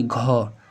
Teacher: जैसे ही आप ख बोलेंगे तो आपके मुंह से ज़्यादा हवा निकलेगी, फिर ग बोलेंगे थोड़ा निकलेगा, बोलेंगे घ, जैसे ही घ कहेंगे तो क्या होती है, हवा ज़्यादा निकल रही है मुख से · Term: महाप्राण